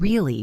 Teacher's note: if I say the simple word really with a flat voice, it just means I am asking for confirmation. But if I say really with a high pitch at the end, it means I am surprised.